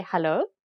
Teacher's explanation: Afrikaners will just say hallo with a rising intonation to indicate that it's a question